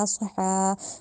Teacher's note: فسحقا لی اصحا میں جو صاد آ رہا ہے اس کو موٹا کر کے ادا کرنا ہے، اس کو سین کی ادائیگی اصحا، سین سیدھی والا اصحا نہیں کہنا، اصح یعنی موٹا کرنا ہے، صاد کی ادائیگی دینی ہے، سین سے مکس نہیں کرنا۔ اصحا میں جو ہا ہے اس کو حلق سے ادا کرنا ہے